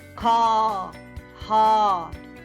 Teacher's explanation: Your tongue is low and very far away from the roof of the mouth, and it's in the middle.